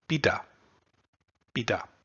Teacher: The one we looked at was called iambic, and it consists of a unstressed syllable followed immediately by a stressed syllable